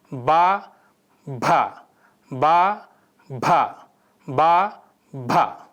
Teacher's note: These form a voiced bilabial stop pair. Bilabial means the sound is formed at the lips.